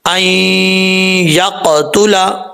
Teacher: حمزہ کو اب یا کے ساتھ جب ملائیں گے بیچ میں نون گر جائے گا ، ٹھیک ہے، این یقتلا، قاف حروف مستعلیہ میں سے بھی · قاف حروف مستعلیہ میں سے بھی ہے، قلقلہ بھی کریں گے اس کو کیونکہ جب ساکن ہے تو قلقلہ ہوتا ہے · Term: ادغام